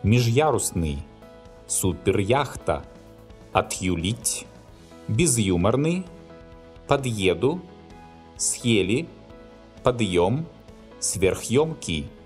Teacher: in modern Russian, the hard sign specifies the sound Y after hard consonants